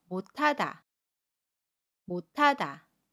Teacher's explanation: 못의 시옷과 첫소리 자음, 히읗이 만나면 받침 시옷은 받침소리 디귿으로 발음하고요. 이 받침소리 디귿이 히읗 자리로 가서 두 음이 만나서 티읕으로 발음해요.